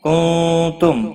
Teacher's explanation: کنتم نون ساکن کے بعد تا آیا ہے، اخفا حقیقی ہوگا، گنہ کے ساتھ پڑھیں گے۔ میم ساکن کے بعد تا آیا ہے، اظہار شفوی ہوگا، گنہ نہیں کریں گے۔